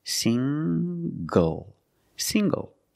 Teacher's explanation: the n g makes the nasal sound plus the hard G